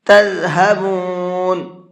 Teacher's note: یہ ذال ہے، ذال نرمی کے ساتھ میں اور سافٹ کر کے پڑھا جاتا ہے اور اس کی آواز میں سیٹی نہیں ہوتی ہے، اس طرح سے پڑھنا ہے۔